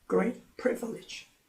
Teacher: 그런데 great와 privilege 이렇게 수식 관계가 될 때는 형용사도 내용어고 명사도 내용어지만 명사에 더 큰 강세가 있다고 했고 더 큰 강세가 있지만 음절이 privilege 3음절이 되니까 제1 그 단어 강세가 있는 곳에 강세가 와서 great도 강하지만 단음절 그다음에 pre 하는 부분이 강하게 읽어지고 나머지는 약합니다. 그래서 great privilege 이렇게 읽어줍니다.